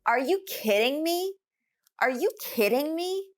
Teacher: we're emphasizing kidding because that is the focal point of this utterance